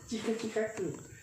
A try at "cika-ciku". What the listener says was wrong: Bukan cika-cikaku bang. Cika ciku. Cika-ciku.